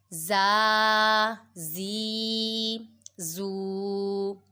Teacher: زا حروف صافیریہ میں سے آ رہا ہے، اس کی سیٹی کا خاص خیال رکھیں گے، اس میں سیٹی نکالیں گے۔